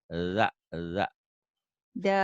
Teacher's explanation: kayak ujung lidah ke ujung gigi ya, agak cadel